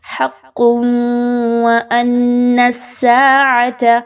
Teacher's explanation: قاف کے اوپر دو پیش کی تنوین کے بعد واو کا حرف ہے، ادغام مع غنہ کرتے ہوئے پڑھیے، غننے کے بغیر نہیں پڑھنا، لا ریب نہیں کہنا، لا ریب فیہا، اس طریقے سے وقف کیجئے۔